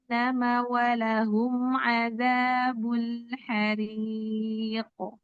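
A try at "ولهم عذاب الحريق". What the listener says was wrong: Lebih besar qalqalah kubra. Lebih besar suara di ujung.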